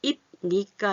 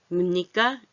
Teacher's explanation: 비읍이 아니라 미음으로 됐어요. 그건 왜 그래요? 요 뒤에 니은이 콧소리예요. 콧소리. 그래서 콧소리끼리 닮아서 붙어서 소리 내는 게 훨씬 표현을 편안하게 나는 거야.